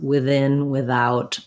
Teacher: you can say with as well as within without with a voice th sound